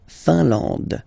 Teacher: I-N here, nasal, un, A-N, nasal, en, and then D, final E, not pronounced.